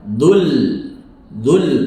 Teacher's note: Nah, ketika mengandung vokal, dulli memiliki tashdid. Saat berhenti, hanya kasrah yang dihilangkan, vokalnya, tashdid tetap ada.